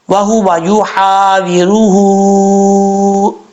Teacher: یوحا ویروہ، یوحا، یا کے بعد جو ہا ہے اس کو بریک پڑھیں گے، یہ بریک ہا ہے، یوحا، ہا ویروہ، واؤ کے نیچے زیر ہے، اور راگ کے اوپر پیش ہے، راگ پر پڑھا جائے گا، ہا کے اوپر الٹا پیش ہے، اور ہا کے اوپر مد منفصل بھی ہے، مد منفصل کی وجہ سے اس کو 2.5 الف کے برابر لمبا کر کے پڑھیں گے